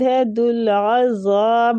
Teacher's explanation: عین وسط الحلق سے اور زال کو کھینچیں گے نرمی کے ساتھ الف مد ہو رہا ہے اور مد ادھر مد عارضی سکون